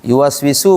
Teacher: wau itu dimonyongkan. Kalau enggak monyong nanti bunyinya o.